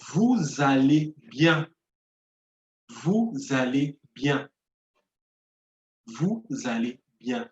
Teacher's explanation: The first word ends with a consonant and the second word starts with a vowel. So I have to connect both.